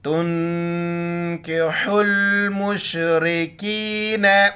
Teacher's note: नून पर इख्फा माल गुन्ना करेंगे